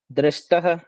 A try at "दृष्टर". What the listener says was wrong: ट के बाद र और बोलना पड़ेगा आपको।